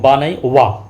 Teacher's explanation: दंत प्लस ओष्ठ दंत प्लस ओष्ठ ऐसा व्यंजन जिनका उच्चारण दंत और ओष्ठ दोनों को मिला के होता है। उसे हम दंतोष व्यंजन कहते हैं।